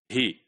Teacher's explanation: So the vowel in he is not a complete vowel, it is the reduced.